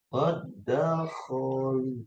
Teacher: Dal yang pertama hilang ya. Dilebur ke dalam dal yang kedua dengan tanda tasdid ya. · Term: idgom mutamasilain